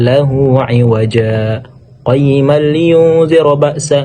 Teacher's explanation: berhenti kira-kira 2 harokat tanpa berniat untuk mengambil napas dengan niat melanjutkan bacaan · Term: saktah